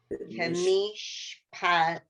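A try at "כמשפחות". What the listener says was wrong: Kamishpachot. Gotta get the ch in there.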